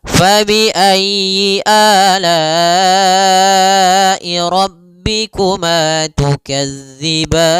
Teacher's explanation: Kemudian tukadziban mad arid lukun. Maka pada lafal ban kita boleh panjang dua harakat, boleh empat harakat dan boleh pula enam harakat.